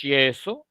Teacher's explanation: pronunciación no es enfática de acuerdo Así que en este caso la palabra yeso se entiende que lo que tengo es una y fricativa porque la pronunciación no es enfática